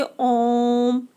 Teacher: ओम को बोलने में हमें दीर्घ स्वर से भी ज़्यादा समय लग रहा है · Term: प्लुत स्वर